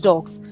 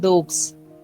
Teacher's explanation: While along with the g, you can't take sir sound. Rather, you have to take the voiced sound z. So that's why we get dogs.